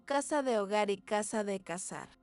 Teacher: El ceseo, claro, que consiste, para que no lo sepa, en que la Z y la C suaves suenan exactamente igual que una S, lo que provoca que palabras como casa de hogar y casa de cazar sean fonéticamente idénticas.